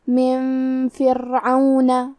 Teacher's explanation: کلمت من کے آخری میں نون ساکن ہے، پھر حرف الفا ہے کلمت فرعون، یہاں حکم ہے اخفاء تو ہم یہ حکم کو غنہ کے ساتھ ادا کریں گے